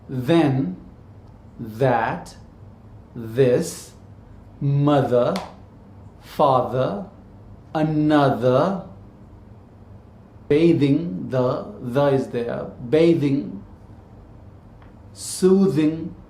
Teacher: the english one is voice dental fricative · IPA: ð